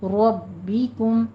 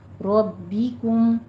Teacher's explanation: را مفخم ہے، با کے اوپر تشدید ہے، سختی سے تھوڑا رک کر پھر کسرہ کی آواز باریک کر لینی ہے. ربکم رب نہیں پڑھنا، ربکم.